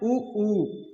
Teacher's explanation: ओष्ठ उ बोलते समय कैसे हो रहे हैं, गोल हो रहे हैं